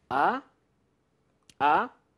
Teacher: So the second one is rising. It's a rising tone. Ah, ah. It kind of corresponds to the English when you say ah or something like eh.